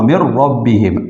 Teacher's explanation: نون کے بعد را آیا ہوا ہے تو نون ساکن جو ہے یہ را سے بدل گیا اور را کا را میں ادغام ہوا، من ربہم، اصل میں من ربہم ہے، تو ابھی نون نہیں پڑھا جاتا، تو یہ من ربہم پڑھا جاتا ہے، اس میں غنہ بھی نہیں ہوتا، تو اس کو ادغام بلا غنہ کہتے ہیں، ٹھیک ہے.